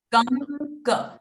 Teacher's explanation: So the anuswara sound will become nasal n. Ng. Okay.